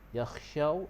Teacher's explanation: syaw tu dia jadi hukum lin, lembutkan